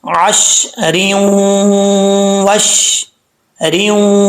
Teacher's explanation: نون تنوین کے بعد حروف یرملون میں سے واو آ رہا ہے، تو یہاں پہ ادغام یرملون ہوگا، ایک الف کی مقدار غنہ ہوگا۔ · جب ملا کے پڑھیں گے تو را کو واو سے ملایا جائے گا